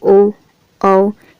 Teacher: पीछे से बोले जाने वाले स्वर होते हैं, इसको कहा जाता है पश्चस्वर